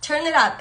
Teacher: El it se pega a la última consonante del verbo y así suena como más rápido y todo más así, más unido, ¿ok?